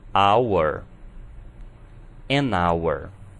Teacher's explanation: em hour não estamos pronunciando o H como um R. Portanto, ouvimos o som de vogais.